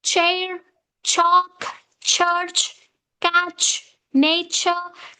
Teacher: plosive is followed with the fricative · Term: affricate